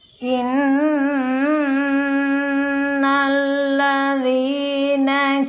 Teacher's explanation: Inna ini adalah wajibul gunna sehingga harus dibaca dengung 2-3 harakat